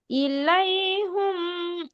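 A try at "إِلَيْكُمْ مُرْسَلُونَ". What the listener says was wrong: হুম না কুম।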